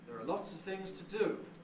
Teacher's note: So here we've got a nucleus on do.